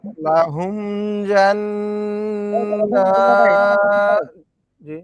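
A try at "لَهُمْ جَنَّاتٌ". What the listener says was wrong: লাহুম তো গুণা নাই গুণা হয়ে যাচ্ছে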